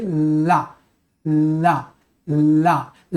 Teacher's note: जब हवा निकालोगे ल बोलने के लिए अगल-बगल से हवा निकलेगी। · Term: पार्श्व